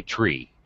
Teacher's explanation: in the Philippines that's how they say three they say tree they can't they don't have th sounds